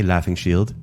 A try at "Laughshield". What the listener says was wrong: Laughshield. It's not a gerund. Laughshield.